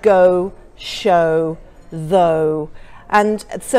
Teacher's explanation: to make this sound, you start off in the centre of the mouth, the sound moves back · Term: diphthong